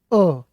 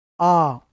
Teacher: अ यहीं खत्म है ये आ उससे तो ज्यादा समय लगा